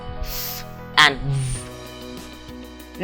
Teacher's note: consonant sounds produced with the lower lip in between the upper and the lower teeth in sounds like f and v. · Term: labiodental